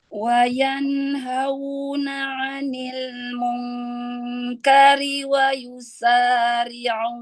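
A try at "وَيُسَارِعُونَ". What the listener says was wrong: Monyong dulu huruf waw ya.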